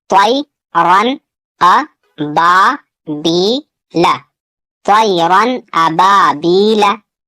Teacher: यहाँ तनवीन का इजहार होगा क्योंकि तनवीन के बाद यहाँ हमजा है और हमजा हुरूफ हलकी में से है। यहाँ या साकिन से पहले जबर है, यालीन होगा। यहाँ अलिफ से पहले जबर है, अलिफ मद्दा थोड़ा खींच कर पढ़ना है।